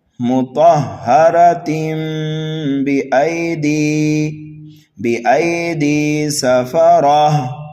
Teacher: تنوین کے بعد اگر حرف با آ جائے تو پھر ہوتا ہے اقلاب، تنوین کی آواز کو میم سے بدل دیا جاتا ہے، تو ملا کر ہم کیسے پڑھیں گے یہاں، مطہرتم بأیدی سفرہ، تو یہاں پر گولتا کو ہم بدل دیں گے ہائے ساکنہ سے، یہاں پر بھی وقف بالابدال ہو رہا ہے۔